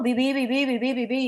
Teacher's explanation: No deja de salir el aire.